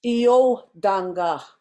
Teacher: you notice how I said the O slightly higher than the rest of the word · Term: accent